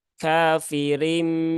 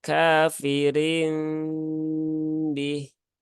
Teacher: Bunyi mim tetap tapi mimnya bukan mim yang kuat tetapi mimnya yang lemah jadi jangan ditekan kuat-kuat kafirim Nah bukan seperti itu tetapi cukup